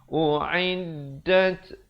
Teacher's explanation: Yang pertama huruf hamzah, kedua huruf ain. U'iddat, ada bunyi anginnya di situ, hamas.